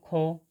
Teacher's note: খ, ক যুক্ত হ, এই দুটি ধ্বনি মিলিত হয়ে মহাপ্রাণ ধ্বনি উচ্চারিত হয়